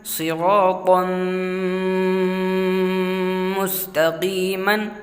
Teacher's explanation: یہاں پر طا کے بعد جو الف آیا ہوا ہے اس کو نہیں پڑھیں گے، طا کو میم میں ملائیں گے۔ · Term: ادغام